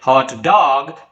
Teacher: the stress is given on the second part of the word and it describes a dog that is hot